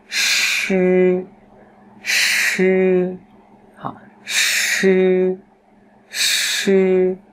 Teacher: Vị trí vẫn như thế nhưng chúng ta không bật hơi, hơi luồng hơi nó ra đều nhá.